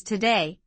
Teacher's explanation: today, two syllables today with stress on the second syllable